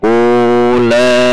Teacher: U dua ketuk karena dumah bertemu dengan wawu sukun.